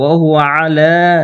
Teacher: তাহলে ওয়াহুয়া তাড়াতাড়ি পড়বো, আয়ে তাড়াতাড়ি পড়ে লামে টান দিব।